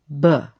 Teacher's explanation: The B sound, B, is a voiced sound, a sound that comes from your throat.